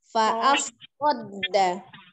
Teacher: So-nya tidak terbaca sa, tapi so.